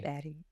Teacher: they don't have the v, the voiced v sound, and they say a b instead.